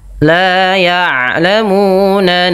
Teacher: huruf ain adalah salah satu huruf yang memiliki sifat bainiyah antara syiddah dengan rokhawah, yaitu tidak terlalu dialirkan bunyi suaranya dan tidak terlalu ditahan.